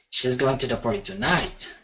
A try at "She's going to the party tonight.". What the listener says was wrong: Yeah, exactly.